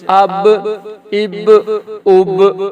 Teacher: اب یہاں قلقلہ بھی ہوگا نا، با ہے حروف قلقلہ میں سے